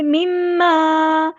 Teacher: لنا، الف مد آ گیا تو مد اصلی کریں گے، مما، میم پہ شد ہے، غنہ زمانی ہو رہی ہے، ہم ایک الف کے برابر رکیں گے